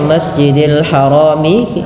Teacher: Maka di sini kita namakan kalau kita berhenti nanti hukum tajwidnya menjadi mad arid disukun. Yang awalnya masjidil harami itu 2 harakat karena dia mad tabi'i, adanya fathah bertemu alif. Karena kita wakaf itu ada sukun yang dimatikan.